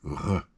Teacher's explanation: In German, we're going further back into the throat.